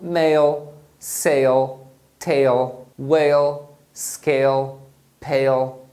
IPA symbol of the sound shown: eɪl